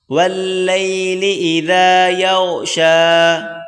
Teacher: ہلکی سی زبان کی نوک باہر نکالیں اور پڑھیں ذال